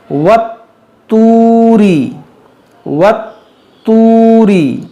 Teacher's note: ये तो हुरूफ कलकला है, इसको खूब जमाव के साथ पढ़ेंगे, मुशद्दद है और मोटा भी करेंगे।